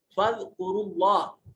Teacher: جلالت سے ما قبل حرف کے اوپر ضمہ ہے، اس لیے اس کو موٹا اور پر کر کے پڑھا جائے گا